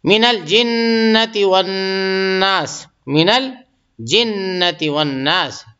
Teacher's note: الناس پہ جو ہے غنہ ہوگا کہ نون پہ تشدید آ گئی